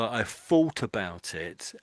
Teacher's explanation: it makes you sound as if you come from the east end of London, because the east end of London, people from there often use an F in that position